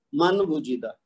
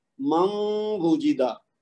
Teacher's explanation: نون ساکن کی آواز کو واو کے ساتھ مکس کرنا ہے، ادغام کرنا ہے غنہ کے ساتھ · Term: ادغام ما غنہ